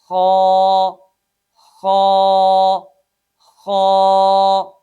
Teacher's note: Number 1 اقصائے حلق، یہ اقصائے حلق ہے، اور اس سے اوپر وسط حلق ہے یعنی حلق کا درمیان، اور اس سے اوپر ادنائے حلق ہے۔ خا ادنائے حلق سے ادا ہوتا ہے